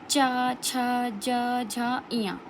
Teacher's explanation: आप इनको बोल के देखिए तो जो हमारी जीभ होगी वो तालु को टच कर रही होगी। ओके, इन्हें हम स्पर्श संघर्षी व्यंजन भी बोलते हैं। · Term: तालव्य व्यंजन